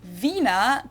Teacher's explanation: The German W is pronounced like an English V